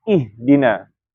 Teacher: H tempat keluarnya kan di pangkal tenggorokan atau di jakun kalau pada laki-laki.